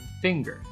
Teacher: but it is actually a single sound we know this because there are words where we actually do produce a sequence of nut and gah such as finger